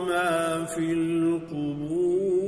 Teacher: قبور اس میں بھی را کو پر کر کے پڑھیں گے کہ جو ہے وہ را ساکن ہے، اس سے پہلے واو ساکن ہے اور اس سے پہلے با پر پیش ہے۔